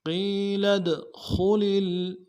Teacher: خا کو موٹا کرنا ہے، لام کو آگے لام کے ساتھ ملانا ہے۔